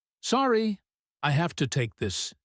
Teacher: "Sorry, I have to take this," he says, his tone polite but a little tense, the word sorry quick and slightly clipped